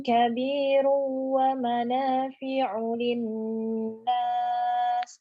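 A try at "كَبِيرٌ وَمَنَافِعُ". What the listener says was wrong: Kurang mendengung Ustazah. Kabirun wa mana.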